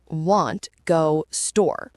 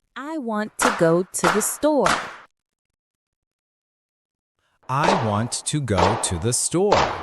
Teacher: The weak words, I, to, the, are squeezed in between. This is English rhythm in action.